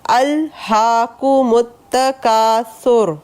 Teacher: وقف کی صورت میں اس را کو پر پڑھا جائے گا